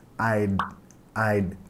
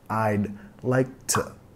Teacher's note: Acá de pronunciación va a ser muy importante pegar la D, I'd, que vas a pegar subiendo tu lengua para tocar tus encías superiores. I'd like to, reduciendo el T.